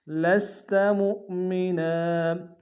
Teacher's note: حمزہ بشکل واو ہے، جھٹکا دیں گے، نون کو تنوین غنہ کریں گے